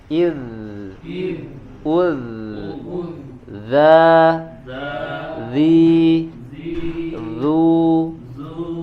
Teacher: Untuk jahar dia tidak mengeluarkan angin ya, baik dha dan dza tidak mengeluarkan angin, hanya mengalirkan suara ya. Jadi ya, suaranya yang mengalir ya, tetapi dibedakan huruf dzal dia sifatnya tipis ya, istifal, yang berbeda dengan huruf dha yang memiliki sifat tebal.